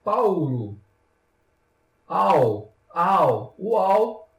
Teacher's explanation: vibra Quer dizer então que é um ditongo aqui a nasal já no caso do ditongo oral o nariz não vibra